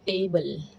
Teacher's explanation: रेट्रोफ्लेक्स, टंग को कर्ल्ड करके